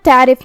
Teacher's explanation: عین کی ادائیگی حلق کے درمیان والے حصے سے ہے جو کہ اس پہ جزم ہے، تو ہمیں عین کو ظاہر کرنا ہے. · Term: حرف العین